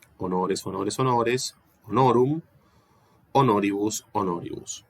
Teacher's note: Fíjense que acá no hay apofonía vocálica. Esta O delante de la S no cambió de timbre.